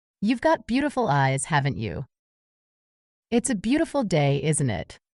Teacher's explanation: falling intonation for expecting agreement